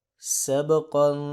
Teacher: با پہ قلقلہ ہوگا اور قاف کو موٹا بھی کریں گے اور اس پہ اخفا بھی کریں گے